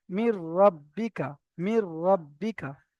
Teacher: নুন সাকিনের পরে র এসেছে, তাই নুন সাকিনকে এই রয়ের সাথে মিলিয়ে বিনা গুণনায় মিলিয়ে পড়তে হবে।